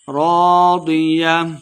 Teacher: کو تلفظ سے پڑھنا ہے، راضیہ ضاد کو مٹا پڑھیں گے، را الف زبر را الف مد ہے 2 حرکات لمبا کر کے پڑھیں گے